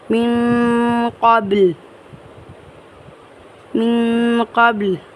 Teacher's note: جب ہم یہاں پر وقف کریں گے تو ہم لام کو ساکن کرتے ہوئے پڑھیں گے